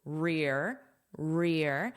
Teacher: it's a long sound because it's the stress sound